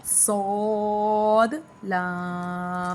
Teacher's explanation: صاد لام حروف صفیریہ ہے، پر بھی کرنا ہے، سیٹی بھی کرنی ہے